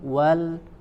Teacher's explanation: ya, monyongkan dulu, kemudian ada huruf lam sukun, wal, ya, maka lam sukun, ya, dan huruf wawnya baca sama-sama dibaca tipis